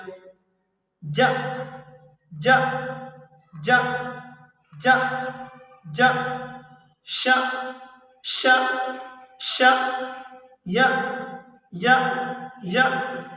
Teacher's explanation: جب ہم جا پڑھ رہے ہیں تو زبان کا درمیانی حصہ اوپر والے تالو سے جا کر ٹچ کر رہا ہے۔